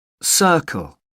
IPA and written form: ˈsɜː(r)kəl (circle)